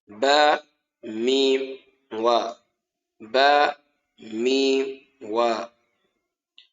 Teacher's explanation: So we have bayn al-shafatain, and that's between the two lips, and that is the articulation point of ba, mim, and wa